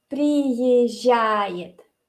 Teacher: Lo que hago es básicamente reemplazar esos dos z con el sonido y, suave.